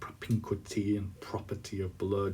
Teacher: So he gives you a long speech full of sort of rather sort of sinister details, and he quite a bit of hardness of sound there with propinquity and property of blood. You can hear the bitterness in those hard plosive P sounds as he explodes with his fury.